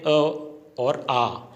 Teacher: इनका उच्चारण है वो कंठ से होता है, इसलिए कंठीय।